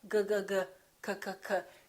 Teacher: G and K have the same point of articulation. It happens back here.